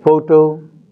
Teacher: in the first word the stress is on the first syllable